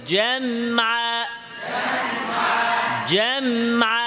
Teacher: মিমে তাওয়াসসুত আওয়াজ ধরে রাখতে হবে জামআ জামআ আওয়াজ ধরে রাখতে হবে মিমে আলাদা না জামআ আলাদা